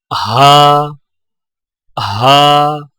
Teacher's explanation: ہا کی ادائیگی میں زبان کی جڑ کو حلق کی طرف دبائے بغیر باریک اور بغیر رگڑ کھاتی سانس میں پڑھیں